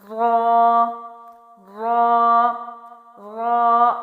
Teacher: زبان کا اگلا حصہ اس کو اپنے پیچھے کے حصے سمیت اوپر کے 4 دانتوں کے مسوڑوں سے لگانا ہے۔